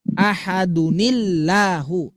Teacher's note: nun yang misterius itu kaidahnya akan selalu dibaca kasroh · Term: nun wikoyah